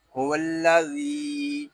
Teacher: ذال کو ایک الف تک کھینچ کر پڑھیں گے کیونکہ یہاں یا مدہ ہو رہا ہے